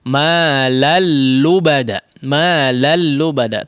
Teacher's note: tanwin yang bertemu dengan huruf lam ya. Di sini tidak digunnahkan, diidghamkan langsung ya, seperti bertasydid. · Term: idgham yang tanpa disertai gunnah